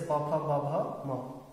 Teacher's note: और वैसे ही हो बचा है, हो से होता है होठ, लेकिन हमारा यहाँ पर क्या होगा ओष्ठ, ओष्ठ है होठ, यानी कि इनका जो उच्चारण स्थान होता है होठ, जैसे प फ ब भ म